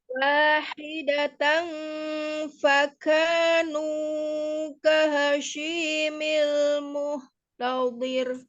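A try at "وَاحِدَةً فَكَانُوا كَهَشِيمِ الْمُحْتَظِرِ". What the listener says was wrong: Nah, nunya kepanjangan, nunya dua harakat aja, nu, kemudian kahashi. Kita lihat di makhraj huruf sin. Apakah huruf sin dari safatain? Tidak kan? Al-lisan. tengah lidah ke langit-langit tengah ya. Ya, tengah lidah yang bertemu dengan langit-langit di atasnya, di tengah juga. Jadi dia tidak ada melibatkan safatain. Di situ ada ha.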